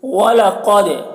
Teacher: قاف کو پر پڑھنا ہے، دال میں قلقلہ کرنا ہے